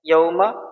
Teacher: یہ واولین ہے اس لیے ہم اس کو نرمی کے ساتھ جلدی پڑھیں گے